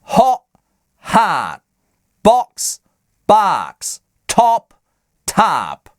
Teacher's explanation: В американском английском краткого О нет. Здесь на месте этого гласного звучит заднее А. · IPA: /ɑ/